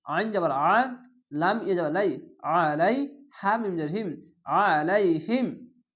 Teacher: আইনটিকে মোটা করে গলা চিপা পড়বেন